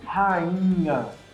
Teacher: Já fala o I com o NH já pronto para sair, né? A língua se posiciona lá no fundo da boca, já no I já se posiciona para falar o NH.